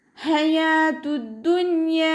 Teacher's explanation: ഹ അക്ഷരത്തിൻ്റെ സൗണ്ടിനെ തൊണ്ടയുടെ മധ്യഭാഗത്ത് തന്നെ കൊണ്ടുവരാൻ ശ്രദ്ധിക്കുക. യ കൂടെ അലിഫ് മദ് വന്നിട്ടുണ്ട്, 2 കൗണ്ട് നീട്ടിക്കൊടുക്കുക കേട്ടോ.